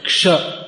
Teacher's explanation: Well, that's how it's pronounced. Like that, the K and the Sh become combined. So it's pronounced something like Ksha.